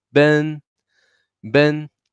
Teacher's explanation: So tone one is always very high volume of your voice and it's flat.